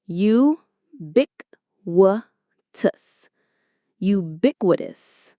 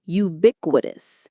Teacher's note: The stress is on that bic syllable.